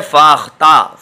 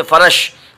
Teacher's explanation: ऊपर के दांत नीचों के होंठ से मिलकर, ऊपर के दांत अपर टीथ मिलेंगे, टच होंगे जो वो डाउन लिप से, ठीक है। ऊपर के दांत नीचे के होंठ से मिलकर फ़ा निकलता है।